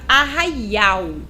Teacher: no finalzinho a letrinha l tem um som de u